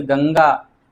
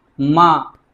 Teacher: केवल नाक से अनुस्वार का करते हैं, अनुनासिक का वहीं मुख और नाक दोनों से करते हैं